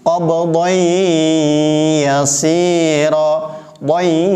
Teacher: Doi, ada dengungnya, bukan datar. Qabdai yasira, bukan hanya sekedar memasukkan menjadi satu huruf, ya-nya seperti ditasydid, tetapi bigunnah, harus ada dengungnya. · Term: idgham bigunnah